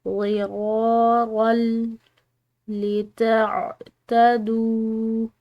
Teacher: را کی تنوین، ٹھیک ہے، یہ لام سے ملے گی، آگے والی لام جو ہے وہ مشدد ہے